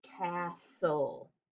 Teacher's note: not just the e is silent but the t is silent too because we say castle right you don't hear the t we don't say castle it's a castle i want to build · The second syllable should be consonant LE, but whenever it's an exception, we cross it off, and not just the E is silent, but the T is silent too, because we say castle, right? You don't hear the T.